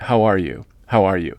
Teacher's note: So, this would be a flat intonation.